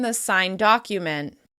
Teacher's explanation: we use the d sound to flow on to the next word. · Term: gemination